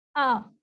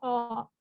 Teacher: او موٹا منہ ہو جاتا ہے, پیچھے سے زبان اٹھ جاتی ہے. آ جو ہوتا ہے اس سے باریک آواز ہوتی ہے, پتلا سا, ٹھیک ہے, ایسی آواز نکلتی ہے. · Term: موٹے